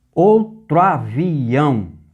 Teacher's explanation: o O de tro junta ao A de avião e o que era duas sílabas se tornam uma. Quando isso ocorrer, você chama de crase.